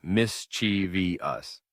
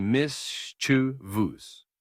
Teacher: Many people add an extra syllable, saying mischiev us, but it's actually mischievous. Only three syllables, not four.